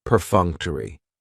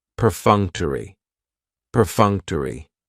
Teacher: Perfunctory has 4 syllables, and the stress is on that second syllable, that funk, perfunctory. That third syllable has the schwa, and it's going to end with that long E sound, perfunctory, perfunctory.